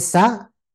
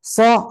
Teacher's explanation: Pastikan sa mulut kita lidah kita lurus biasa aja. Tapi kalau udah menyebut so, ujung tetap pada tempatnya tapi pangkal lidah diangkat.